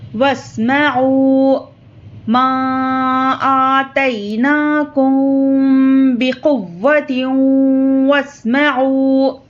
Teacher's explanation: تا کو واو سے ملا کر غنے کے ساتھ پڑھیں گے